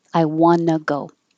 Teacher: you drop the T and it sounds like wanna